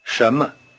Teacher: In normal speech, the tone pattern of 什么 sounds rather like a rising tone over both syllables.